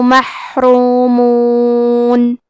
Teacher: کلمت محرومون میں حا ساکن کو ہمزے سے پڑھنا ہے اور حرف الراء پہ پیش ہے لہذا حرف الراء کو موٹی آواز میں پڑھیں گے